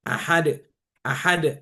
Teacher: qalqalah ketika berhenti, maka dia lebih jelas qalqalahnya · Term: qalqalah kubro